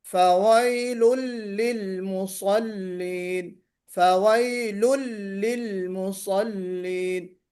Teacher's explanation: لام کو موٹا نہیں پڑھنا ہے، باریک پڑھنا ہے